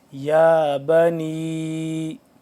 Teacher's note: یا کھڑا زبر یا، اس کو تھوڑا لمبا کریں گے